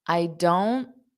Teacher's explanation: Notice that T is not pronounced as don't because we don't want that puff of air. · So I don't, just a flap T, which means you put your T in that position, but you put your tongue in the position of the T, but you don't flick it out.